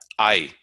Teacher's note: I is a diphthong, but rather than sliding, it's a combination of I and E.